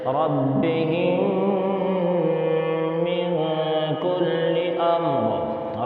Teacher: 1 الف کے برابر غنے کے ساتھ پڑھیں گے، یعنی تھوڑی دیر ناک میں آواز کو روک کر پڑھیں گے، جیسے ربہم من کل امر، ربہم میں یہ جو ناک میں آواز جا رہی ہے اسی کا نام غنہ ہے۔